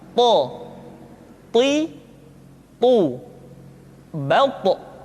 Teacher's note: Sehingga dengan dua sifat ini, maka ketika to diucapkan, suara kita terdengar menebal · To diucapkan dengan menyentuhkan ujung lidah dengan gusi-gusi dua gigi seri bagian atas. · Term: huruf to